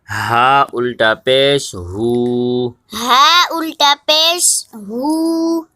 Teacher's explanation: ہا کے اوپر الٹا پیش ہے، ایک الف مقدار کھینچ کے پڑھیں گے۔